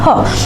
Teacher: ह का उच्चारण स्थान क्या होता है, कंठ होता है, ठीक है। ह का उच्चारण स्थान क्या होता है, तो कंठ होता है, इसे हम कंठ से बोलते हैं ह, ठीक है।